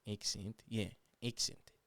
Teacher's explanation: an Aussie accent will turn A's into E's